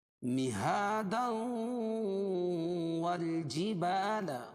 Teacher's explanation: اگر مہادوں کو والجبال کے ساتھ ملا کے پڑھتے ہیں تو یہاں ادغام مع الغنہ ہوگا. کیوں کہ تنوین کے بعد ادغام مع الغنہ کے 4 حرفوں میں سے واو ہو جائے گی.